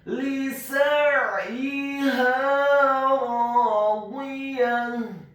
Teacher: Huruf sinnya dibaca fathah 1 harokat. Kemudian huruf ainnya ditekankan, keluar dari tenggorokan bagian tengah dibaca sukun